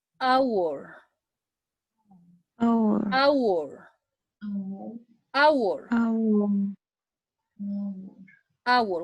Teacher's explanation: In this case, it's necessary to write H, but not pronounce.